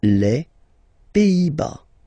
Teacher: Final S here, not pronounced.